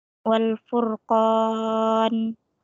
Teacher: Hukumnya mad arid lisukun dibaca panjang 2, 5 atau 6, 2, 4 atau 6 harokat.